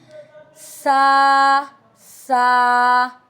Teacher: सा जुबान की नोक हल्की सी ऊपर के दांतों के किनारे के दरमियान से जब निकलती है तो तुम्हारे पास सा आदा होता है। Tip of the tongue slightly between upper teeth